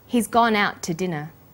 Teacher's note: we stress he's gone out and dinner the two is unstressed when we link out which is stressed and to which is unstressed the final t sound in out is held slightly longer